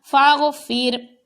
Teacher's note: جب ساکن حرف ہے تو اس سے پہلے متحرک حرف کو دیکھیں گے، اس کے ساتھ اس کو ملا دیں گے، یعنی اب یہ درمیان میں الف ہے تو اس کو الف کو نہیں پڑھنا، غین کے ساتھ زبر کو ملا کر پڑھا جائے گا